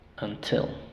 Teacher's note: until en este caso la sílaba tónica es la segunda Sí entonces aquí tenemos una sílaba cerrada la primera Y esa